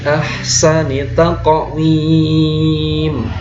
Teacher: nun sukun atau tanwin nya itu seperti menyerupai m ya tapi sangat tipis sekali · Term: ikhfa Haqiqi